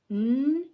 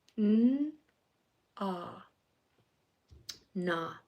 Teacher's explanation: N, your tongue is to the roof of your mouth. Ah, your jaw is dropped.